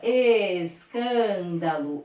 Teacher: Pro, ó, aquela que está antes da paroxítona. Ou seja, é a antepenúltima sílaba mais forte. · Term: proparoxítona